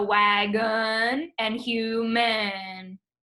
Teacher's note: the vowel, usually an A or O, before the letter N at the end of words is often a schwa. So A or O at the end of a word, but by the letter N.